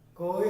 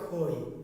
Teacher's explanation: খই বলতে গেলে একটুখানি বাড়তি, খুব বেশি না, কিন্তু আপনি যদি বুঝেন দেখেন যে একটু, তার মানে ক আর গ বলতে গেলে অনায়াসে তা বলা যায় অল্প পরিশ্রমে, আর খ এবং ঘ বলতে গেলে যেন একটু বাড়তি প্রেশার সৃষ্টি করতে হয়, কারণ একটু বেশি বাতাস বের করতে চাই আমি, ফলে একটু বাড়তি চাপটা বেশি দিতে হয়।